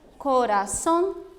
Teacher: são palavras que a última sílaba está destacada e elas são pronunciadas de uma maneira mais forte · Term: palavras agudas